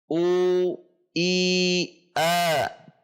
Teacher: Fathah dibaca dengan terbuka sedikit dari posisi kasrah